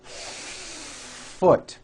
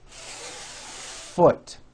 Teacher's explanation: You need to hear the air friction. When practicing, try to give the F 1 beat.